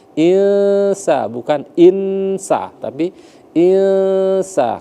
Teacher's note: Jadi samar-samar itu antara bunyi nun dengan sin dengan ditekan selama 2 harokat. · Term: ikhfa